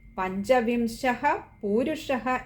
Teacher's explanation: രണ്ടിടത്തും വിസർഗമുണ്ട്. രണ്ടും ഒന്ന് പകുതി ഹകാരത്തിൽ വായിക്കുക.